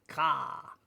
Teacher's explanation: in the sound you can hear the A sounds like a longer sound, ka. So it's a longer A sound. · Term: kamat